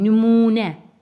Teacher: Nümunə sözündə ikinci hecasındakı U saiti uzun tələffüz olunur.